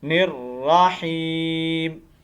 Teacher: تو یہ یا مدہ ہے، آپ کو پتہ ہے کہ یا ساکن سے پہلے زیر آ گئی ہے، تو اس لیے یا کو ایک الف کے مطابق لمبا کریں گے